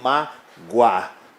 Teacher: Em mágoa, nós temos um ditongo crescente, porque o O vai soar como semivogal